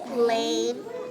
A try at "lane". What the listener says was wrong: Ooh, really close. You said plane. Do you see the p sound?